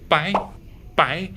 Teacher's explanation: we just do it bye bye very short and going up